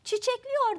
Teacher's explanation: y'den önce gelen e geniş ünlüsü daralmış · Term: ünlü daralması